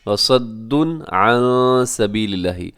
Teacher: وَصَدٌّ عَن سَبِيلِ اللَّهِ، اور صدن کے اوپر تنوین ہے اور تنوین کے بعد عن یعنی کہ عین آ رہا ہے، تو یہاں اظہار کریں گے، غنہ نہیں کریں گے